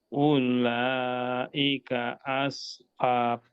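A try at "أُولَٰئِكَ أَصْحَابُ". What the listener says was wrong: Nah, lalu U-nya di sini Pak pendek ya. Karena wawunya tidak ada tanda sukunnya. Jadi ula langsung aja.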